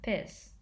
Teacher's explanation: The p sound is used for the f sound, so the English word fish would become piss.